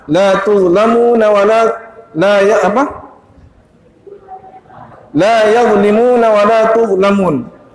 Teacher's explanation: Huruf dha juga begitu. Huruf dha sama seperti huruf zal keluar dari ujung lidah dengan ujung gigi sirih atas, juga ada suara terseret sedikit.